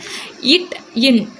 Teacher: நாக்கோட நுனி வந்து அன்னத்தின் நுனியை போய் தொடுது